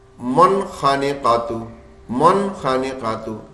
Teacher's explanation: बिल्कुल नून साफ साफ पढ़ना गुना बनने नहीं देना · بالکل نون صاف صاف پڑھنا ہے, غنہ بننے نہیں دینا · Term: इजहार